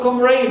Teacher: we stress the first syllable, right, but not the suffix raid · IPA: /ˈkɒmreɪd/